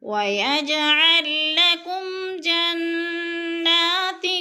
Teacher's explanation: جنہ کی نون مشدد ہے، غنہ کریں گے، کھڑی زبر ہے، 2 حرکات کے برابر کھینچ کر پڑھنا ہے۔